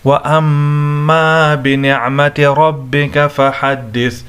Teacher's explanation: یہاں پر میم مشدد ہے، اس کو ہم غنہ کے ساتھ پڑھیں گے، را کو موٹا کر کے پڑھیں گے.